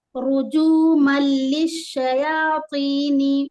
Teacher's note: جب تنوین کے بعد لام یا را ہوتا ہے تو ادغام بلا غنہ کرتے، یہاں پر غنہ نہیں ہوگا، اور جلدی پڑھیں گے یہاں پر رجومل للشیاطین ہے نا.